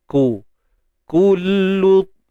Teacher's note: Muncung bibir dua-dua sebab baris depan kan. Kaf baris depan, lam pun baris depan.